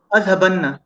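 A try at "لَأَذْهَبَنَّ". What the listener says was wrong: لا اذهبن. آپ نون جو شدہ ہے اس کے اوپر غنہ اور وہ دونوں کر نہیں رہے.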